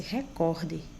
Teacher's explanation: suas regras pronuncia-se recorde com intensidade na penúltima sílaba e não recorde como tem pessoas que dizem com intensidade na